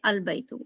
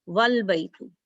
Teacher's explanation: But if Waw is there, then you don't pronounce Alif. You just connect Waw with Lam. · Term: Hamzatul Wasl